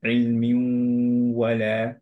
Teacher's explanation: এর জন্য কি হচ্ছে, যে আমাদের নুনের যে গুণনাটা সেইটা অ্যাকচুয়ালি ধরে রাখছি আমরা, কিন্তু আমরা পড়ছি এর জন্য ইলমিউ ওয়ালা, রাইট? নুনটাকে অ্যাকচুয়ালি ওয়াওয়ের মতোই পড়ছি, কিন্তু গুণনাটা স্টিল দেয়ার